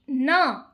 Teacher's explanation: दंत न दंत से भी होगा और नासिका से भी होगा।